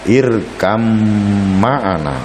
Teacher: Ba bertemu dengan mim, irkab ma'ana dibaca irkam ma'ana. Ba diganti atau ditaklib menjadi mim sehingga seperti mim bertasydid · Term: idgham mutaqaribain